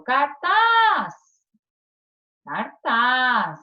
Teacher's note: Então, a sílaba tônica é o taz. Oxítona.